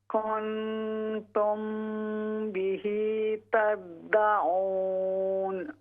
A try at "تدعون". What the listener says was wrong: یہ جو تدعون ہے نا اس کو ہم نے ناک سے نہیں پڑھنا. تدعون کی بجائے تدعون.